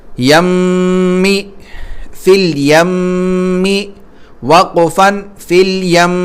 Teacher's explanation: میم کو کھینچ رہے ہیں نا منہ ہونٹ بند کر کے، تو یہ جو ہے غنہ کہلاتا ہے. میم کی آواز کو ناک میں لے جانا